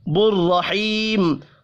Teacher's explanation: بررحیم را کو زبر کی وجہ سے پر پڑھنا ہے، یا مدہ کو ایک الف کے برابر کھینچ کر پڑھیں گے. وف کی صورت میں میم ساکن پڑھا جائے گا.